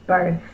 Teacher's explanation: my tongue is between my teeth and no voice is on. That's the TH digraph.